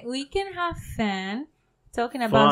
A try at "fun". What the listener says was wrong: Fun, not fan. No, you said fan.